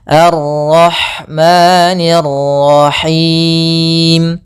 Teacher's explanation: maka di sini ada Ro tafkhim pada lafal Ar